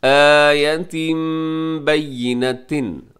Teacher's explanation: کے آخر میں تنوین ہے، تنوین کے بعد با ہے، تو جب بھی تنوین کے بعد با آ جائے یا نون ساکن کے بعد با آ جائے تو اس کو ہم میم سے بدل دیتے ہیں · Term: اقلاب